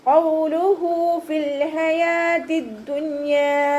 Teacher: ഖൗലു കോഫ് ഇസ്തിഅലാൻ്റെ ലെറ്ററാണ്. ഉച്ചരിക്കുന്ന സമയത്ത് നമ്മുടെ നാവിൻ്റെ ബേക്ക് നന്നായിട്ട് മുകളിലേക്ക് പൊക്കി കൊടുത്തിട്ട് തഫ്ഹീം ചെയ്യുക കേട്ടോ.